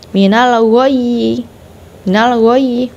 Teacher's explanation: tasydid di akhir ketika wakof dia harus ditekan dulu dan ditahan